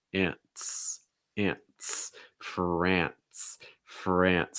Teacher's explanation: nce makes almost like an nts sound